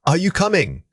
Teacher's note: Your voice must rise at the end signaling that you require confirmation from the listener. But if you say it with an immediate fall, it becomes a firm declaration of fact.